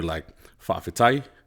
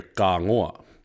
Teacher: But then you have the ka form, which is very casual, and just, it's so casual that when you see those words like wha'awhitai, the way you'll hear it and the way people say it a lot is wha'awhikai. So they changed the T's to the K sound.